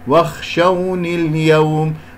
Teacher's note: هذه بحذف الياء نون مكسورة فقط